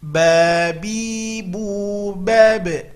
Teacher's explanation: Huruf ba adalah huruf qalqalah, pantulkan ketika sukun.